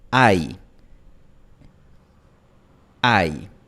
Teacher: El diptongo tiene el fonema /a/ más el fonema /i/ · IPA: [aj]